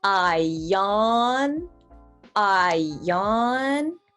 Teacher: that one word sounds like one word and in this case you connect that i and then o sound with a y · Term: y sound